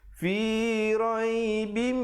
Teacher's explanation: didengungkan di situ, tanwin bertemu mim, idgham bi gunnah.